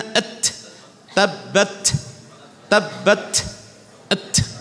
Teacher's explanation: mengalirkan nafas persis dari makhrajnya ketika kita lepas at, ta, tabbat, huruf kaf ak, dari sini dari pangkal lidah ak, seperti itu. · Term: huruf ta